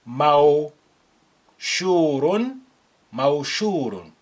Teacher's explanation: Now note how I pronounce the waw with sukun as an ow sound.